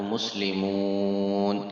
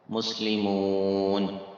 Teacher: کھینچیں گے اس کو، کیونکہ حروف مدہ کے بعد عارضی سکون ہے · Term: مد عارض